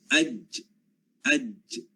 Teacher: Hujung lidah, ya, ataupun tengah lidah, di bahagian tengah lidah kita menempel bahagian tengah lelangit. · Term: Jim